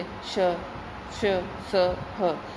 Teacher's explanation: एकदम घर्षण या रगड़ उत्पन्न होती है, गर्म हवा निकलती है अंदर से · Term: संघर्षी व्यंजन